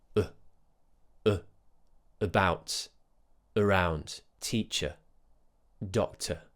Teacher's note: the famous schwa sound which is bang in the middle of the mouth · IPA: /ə/